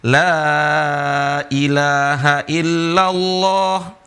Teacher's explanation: Dibaca panjang lamnya. Alifnya ini tidak ada harokat, lam alif, la ilaha illallah.